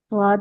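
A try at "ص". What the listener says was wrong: स्वाद के लिए होठ गोल हो रहे हैं जबक होठ गोल नहीं करने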